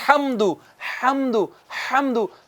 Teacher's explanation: ہا جو ہے حاضرین کرام یہ ادا ہوتا ہے وسط حلق سے